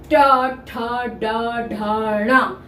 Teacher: तालू के आगे और दांतों के पीछे ऊपर वाले भाग को छूकर बोलते हैं ट ठ ड ढ तो सभी ट वर्ग का उच्चारण स्थान